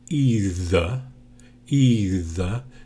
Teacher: the th here is voiced so if you put your fingers here and say either either you'll hear the vibration